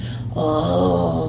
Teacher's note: I was going to ask about the voice, because I thought he did sound like the actor, but if you went like this, Oh, it's a lot of, like, pushing a lot of air through your vocal cords and speaking in a pitch that is not your natural pitch